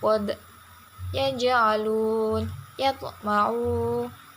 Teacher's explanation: Yang pertama, qalqalah sugro adalah apabila ada huruf yang 5 berharokat sukun dan berada di tengah kata. Cara membacanya ialah dengan memantulkan suara yang tidak begitu keras.